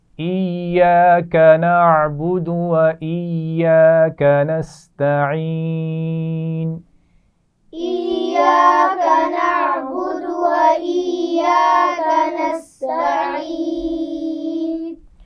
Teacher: ایاک یا پر شد ہے تو اس لیے اسے پیچھے حمزہ کے ساتھ بھی ملائیں گے اور اپنی آواز کے ساتھ بھی پڑھا جائے گا